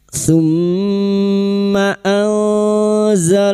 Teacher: Mim yang bertasdid gunna musyaddadah. Kita dengungkan selama tiga harakat. · nun sukun bertemu zain ikhfa hakiki kita samarkan bunyi nun sukun dan mendengung selama 3 harokat